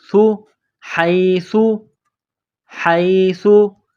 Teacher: سا کو نرم کرنا ہے، زبان کا سرہ تھوڑا سا باہر نکالیں گے، سا کو پڑھتے وقت